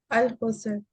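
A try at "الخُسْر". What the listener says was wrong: अच्छा खुस्र है, ठीक है, सीन के ऊपर जबर नहीं, सीन के ऊपर जज़म है।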